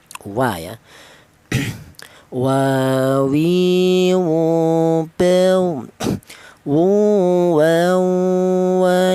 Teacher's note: Huruf wau ini keluarnya huruf berasal dari kedua bibir yang renggang.